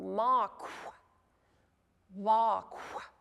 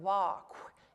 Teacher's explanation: a K sound, and then you blow out like a whispered W. It's basically like whispering a W, but it should be pretty noisy, lots of air.